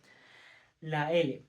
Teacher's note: el aire que fluye por los lados de la lengua